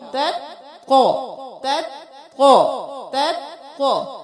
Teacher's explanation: جب آپ قو کو موٹا کرنے کی کوشش کریں کیونکہ یہ موٹے حروف میں سے ہے تو پھر تا موٹا نہ ہو, تا باریک قو موٹا